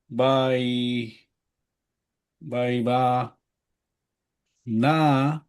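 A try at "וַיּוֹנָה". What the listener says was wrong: V. is just V. And then the yod is starts a syllable. V'yonah.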